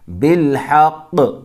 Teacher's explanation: رکیں گے تو قاف ساکن ہو جائے گا، بالحق، ورنہ ملا کے پڑھیں گے تو بالحق۔